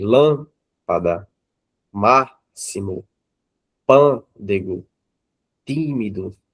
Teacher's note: a antepenúltima sendo acentuada, nós temos a palavra proparoxítona